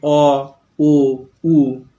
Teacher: যে স্বরধ্বনি উচ্চারণের সময় জিহ্বা গলার দিকে অর্থাৎ ভিতরের দিকে পিছনের দিকে সরে যায়, গুটিয়ে যায়, তাকে বলে পশ্চাৎ স্বরধ্বনি। খেয়াল করো, অ আগে যখন আমরা ই বলছিলাম জিভটা যে জায়গায় ছিল, অ যখন বললাম জিভটা অনেকটা পিছন দিকে সরে গেছে।